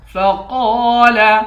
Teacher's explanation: قاف کو موٹا پڑھیں گے، 1 الف کی مقدار کھینچ کر پڑھیں گے